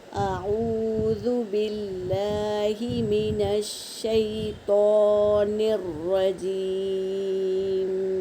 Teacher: اب نون کو را میں ملائیں گے اور را کو پر پڑھیں گے، اور یا ساکن سے پہلے زیر ہے یا مدہ، اور میم کو وقف کرنے کی حالت میں ساکن کر دیں گے۔